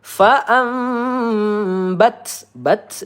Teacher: nun sukun bertemu ba ya. Iqlab ya, kita panjangkan dua atau tiga harakat.